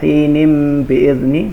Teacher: ini disebut dengan iklab, jadi bacaannya membalik menjadi mim